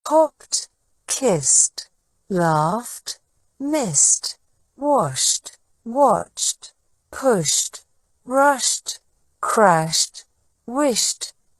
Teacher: the past tense ending e d is pronounced with a t sound instead of a D sound